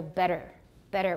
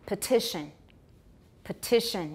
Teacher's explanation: We've got T turning into a tap, and er is not stressed, right? Better.